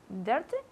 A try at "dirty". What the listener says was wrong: Very good, okay.